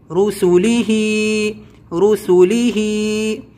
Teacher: رسولی نہیں کھینچیں گے اور ہا کھڑی زیر ہی کھینچیں گے